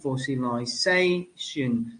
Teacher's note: the primary stress has changed from the first syllable, fossil, to almost the end of the word, station. So what kind of suffixes do we find in this case?